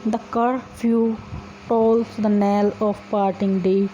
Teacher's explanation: in iambic meter the poem is written in which the first syllable is unstressed and the second syllable is stressed